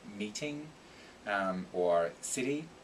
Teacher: the t becomes like a little tap between vowel sounds